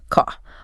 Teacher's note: A traditional Boston accent, often non-rhotic, meaning their R sound gets dropped at the end of words or before consonants.